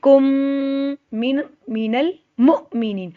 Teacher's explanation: मैंने जज़म वाली मीम नहीं पढ़नी, मैंने पढ़नी है मुशद्दद, या हम करेंगे इदग़ाम बिल गुन्ना, गुन्ना के साथ इदग़ाम